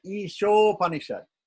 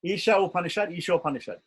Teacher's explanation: instead of saying Isha Upanishad with a break in between, we put it together and say Ishopanishad. Isha, A and O, A and U become O, right? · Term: Sandhi